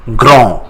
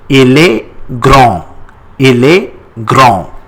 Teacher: We don't pronounce D at the end.